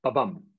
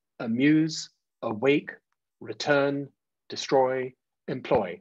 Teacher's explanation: So a short syllable followed by a stressed long syllable. So unstressed, short, followed by a stressed syllable. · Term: iambic meter, iambic meter rhythm